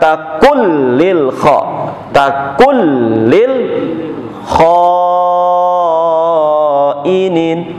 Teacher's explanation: idgham bila gunnah pengertiannya adalah tanpa gunnah, tanpa dengung, tanpa ditahan